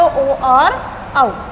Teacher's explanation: ओ और औ कंठोष्ठ के अंतर्गत आते हैं